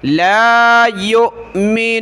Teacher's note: حمزہ ساکنہ ہے جھٹکا دیں گے